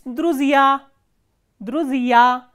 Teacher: here stress is on the ending ya